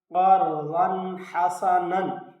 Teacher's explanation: ضاد کے اوپر دو زبریں ہیں، تنوین ہے، اس کے بعد حروف حلقی میں سے حا ہے، تو یہاں اظہار ہوگا